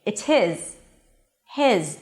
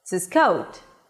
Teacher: If they're stressed, the H is absolutely pronounced. If they're not stressed, the H drops. · I'm stressing the word his. So, I'm pronouncing the H.